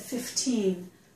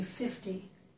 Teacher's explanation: I would stress the second syllable to tell you 15